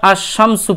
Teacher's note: আর র এর উপর তাসদিদ দিয়ে আর রাজুলু পড়বেন তারপরে এখানে লাম বাদ দিবেন শিনের উপর তাসদিদ দিয়ে আর শামসু পড়বেন